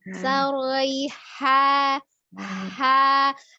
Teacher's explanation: H-nya dia istifal, jadi tidak mengangkat pangkal lidah.